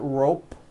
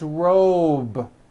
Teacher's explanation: same thing with robe also has a voice to be ending it's not rope with an unvoiced P it's robe